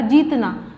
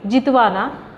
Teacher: मतलब आदि दीर्घ स्वर रस्व हो जाते हैं, मतलब जो दीर्घ स्वर है वो क्या हो जाते हैं, रस्व हो जाते हैं। मतलब उसका उच्चारण कैसा होता है, मतलब कम होता है ऐसे।